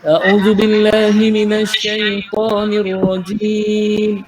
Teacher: Syai dan nipis, lepas tu ta dah tebal.